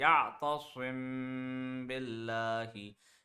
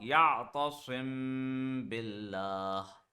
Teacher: When meme has a jazm and the next letter is ba, then also we apply gunna.